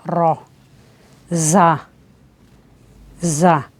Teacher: ज़बान की नोक और ऊपर नीचे के दांत जब आपस में मिले तो उससे ज़ा और सीन अदा होते हैं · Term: सीटी वाले हुरूफ